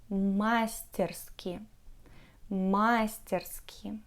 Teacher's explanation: russian people usually stress the first syllable in the word masterski